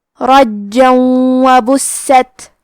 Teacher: ہم تنوین کو واو میں ملا کے غنہ اور تشدید کے ساتھ یہ حکم کو ادا کریں گے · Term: ادغام